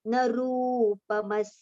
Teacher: न रूपमस्येह तथोपलभ्यते. Rupa, see, Ru has got long U vowel sound, so we have to prolong it